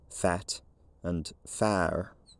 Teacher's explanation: So now you have a vowel length difference between fat and far. By the 1740s, the long vowel had probably become lowered to some extent, fat and far.